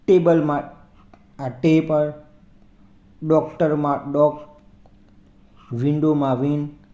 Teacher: મોટાભાગના બે અક્ષરખંડવાળા જે નાઉન્સ હોય છે એમાં જે પ્રથમ અક્ષરખંડ હોય છે તો એના પર ભાર આવે છે. જેમ કે ટેબલમાં આ ટે પર, ડોક્ટરમાં ડોક, વિન્ડોમાં વિન. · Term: ફર્સ્ટ સિલેબલ